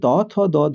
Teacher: দন্ত লাগছে তার সঙ্গে জিহ্বাগ্র জিহ্বের অগ্রভাগ যুক্ত হয়ে এর উচ্চারিত হয়েছে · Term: দন্ত বর্ণ